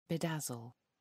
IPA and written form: bɪˈdæzəl (bedazzle)